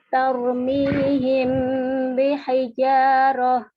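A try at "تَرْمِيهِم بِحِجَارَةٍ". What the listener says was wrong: Nah, kurang gunanya. Gunanya kurang panjang. Sedikit lagi, Om. Tarmihim bihijarah.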